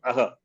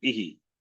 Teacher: A is from the Kanta, therefore Aha. E is from the Talu, therefore Ihi. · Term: visarga